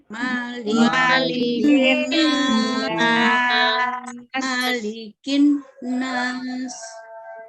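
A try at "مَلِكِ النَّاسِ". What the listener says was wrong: ya, didengungkan nunnya. Nah, sekarang tadi sudah Ibu tunjukkan cara melafalkannya. Koreksinya adalah kita jelaskan dengungnya pada nun.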